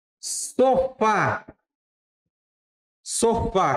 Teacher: Sofá, qual que é a sílaba tônica? É no Fá. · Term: oxítona